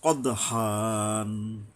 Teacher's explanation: দালের উপরে কলকলা, ওই যে প্রতিধ্বনিত হওয়া